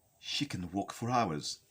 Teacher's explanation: here the prominent words are walk and hours okay mainly because they are the words that carry the weight